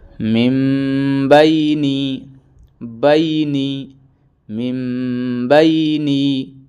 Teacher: نون ساکن کے بعد با آ جائے تو نون ساکن کو میم سے بدل کر پڑھیں گے